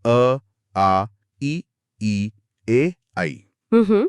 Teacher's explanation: अवृत्तमुखी, जिनमें होंठ गोल नहीं होते